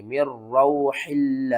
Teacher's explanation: نون ساکن کے بعد آگے حروف یرملون میں سے را آ رہا ہے، تو یہاں پر ہم نے کیا کرنا ہے، ادغام کرنا ہے لیکن غننے کے بغیر۔ میم را زیر مر، را واو زبر رو، مر رو، حا لام زیر حل، لام کھڑا زبر لام، مر رو حل، اور وقف کی صورت میں ہا کو ساکن کر دیں گے، مر رو حل۔